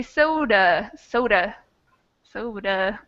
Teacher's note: I hear a schwa sound in the last A.